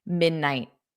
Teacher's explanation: So I generally don't push out that T, midnight